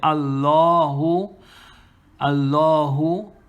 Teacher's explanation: the lam here mushaddada becomes tafkhim also